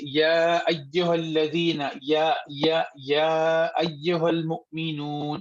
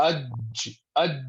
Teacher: زبان کو بیچ سے اٹھائیں، تالو کے بہت ہی قریب لے جائیں، لیکن تالو سے ملانا نہیں ہے